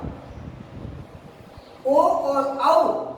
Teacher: और दोस्तों कंठोष्टम, ओ और औ दोनों है वो कंठ और ओष्ठ दोनों से बोले जाते हैं